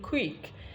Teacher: you now find out that the lips becomes affected and because of that we said that c has become labialized